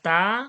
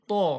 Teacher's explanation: হয় তও সেইখান থেকে উচ্চারণ হয় কিন্তু দুটোর মধ্যে পার্থক্য রয়েছে তা টা কি পাতলা আওয়াজে আর ত টা মোটা আওয়াজে